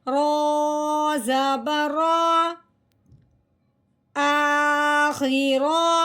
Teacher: رو کے اوپر زبر آ جائے، رو کے اوپر پیش آ جائے، اس رو کو موٹا کرتے ہیں